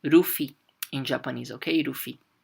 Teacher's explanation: Okay, I know in English we say Luffy with the L, but as you guys know, in Japanese, we do not have the L sound. So everything that is L becomes an R